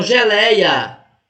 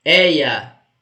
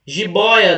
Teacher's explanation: essas pronúncias e elas são abertas com os ditongos ei oi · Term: ditongos abertos